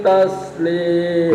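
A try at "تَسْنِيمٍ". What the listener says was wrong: Kurang dengung sedikit tadi pas.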